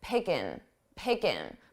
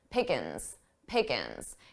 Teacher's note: native speakers often drop the G sound or make it very soft with in